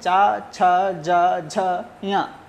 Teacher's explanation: च वर्ग में चा, छ, ज, झ, ञ, इन वर्णों का उच्चारण स्थान तालु है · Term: तालव्य